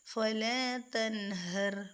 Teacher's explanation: نون ساکن آگے ہا رہی ہے حروف حلقی میں سے، تو یہاں پہ اظہار کریں گے یعنی نون کو واضح کر دیں گے. فلا تنہر، رکیں گے نہیں، جیسے کہ تن یا تا، ان چیزوں کا خیال رکھیں بالکل کلیئر.